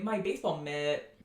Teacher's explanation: So you can say, my baseball mitt, you can have a long I in American English.